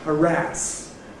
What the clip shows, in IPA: həˈræs